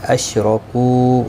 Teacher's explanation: را پور پڑھا جائے گا زبر کی وجہ سے